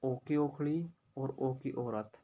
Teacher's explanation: इन दोनों का उच्चारण स्थान है कंठ प्लस ओष्ठ, यानी कि गला और हमारे होठ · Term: कंठोष्ठ